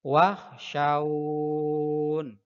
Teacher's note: Kalau dia berhenti ketika wakof, maka ini menjadi mat. Disebut dengan mat lin atau mat lain, ya. Membacanya 2, 4 atau 6 harokat.